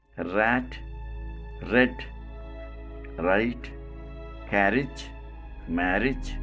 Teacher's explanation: let us take up rural sound place of articulation post alveolar manner of articulation approximate or frictionless continuant quality voiced the sound is called post-alveolar voiced approximate listen to these words